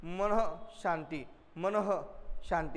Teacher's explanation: विसर्ग उच्चारत असताना हवेचे किंचित विसर्जन होते. बघा जसं म्हणतो मी या ठिकाणी मनः शांती, मनः शांती म्हणजे थोडासा हवेचा काय होतो थोडा किंचित विसर्जन होते म्हणून यास काय म्हणतात विसर्ग असे म्हणतात.